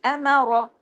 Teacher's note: را ہیوی، امر، لیکن زیادہ لمبا نہیں کرنا، الف نہیں ہے اس کے ساتھ